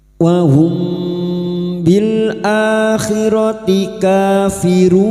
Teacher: Mim sukun bertemu ba ikfa syafawi, samar di bibir, kita samarkan dan mendengung siap membunyikan huruf depannya yaitu huruf ba